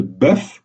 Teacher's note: dans le cas de bœuf au singulier, on prononce le F et donc la syllabe est entravée. Comme dans tous les cas précédents, syllabe entravée signifie voyelle prononcée de manière ouverte.